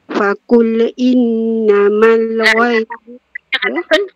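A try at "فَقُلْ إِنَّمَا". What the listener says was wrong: Fakul tahan lam sakok fakul innama lam tu bagi dia tempo yang cukup untuk sebut lam fakul innamal mengapa pula fakul innama anon tu dengung wajib bagus anon tak perlu dengung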